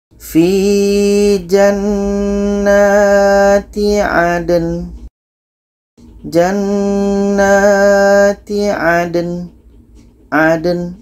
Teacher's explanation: Dal mati, nin ini pendek maka kita matikan. Jadi di sini ada dua huruf mati, dal dengan nun. Dua-duanya kita tetap baca.